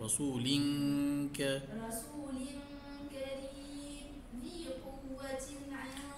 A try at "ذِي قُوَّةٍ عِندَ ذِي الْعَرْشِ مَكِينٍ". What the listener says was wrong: ذي قوة تي هذا ما بداش همزة ذي قوة لذي قوة عند ذي